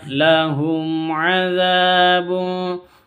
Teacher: za panjang 2 harokat, alif diawali dengan fathah.